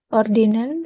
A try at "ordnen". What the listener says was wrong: Nah, bukan ordinen, ordnen.